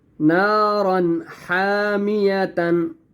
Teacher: اب یہاں پہ آپ دیکھیں نارن کے آگے حا آ رہا ہے، حا بھی حروف حلقی میں سے ہے، اس لیے یہاں پر بھی ہم نے غنہ یا اخفا نہیں کرنا